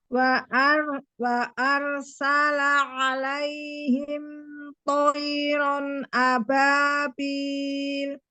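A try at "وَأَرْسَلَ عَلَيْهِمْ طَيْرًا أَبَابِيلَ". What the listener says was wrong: Nah, seperti itu. Lebih natural kan kedengarnya ya?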